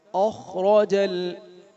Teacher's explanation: را موٹا ہوگا یہاں پر اور عین کو ادا کریں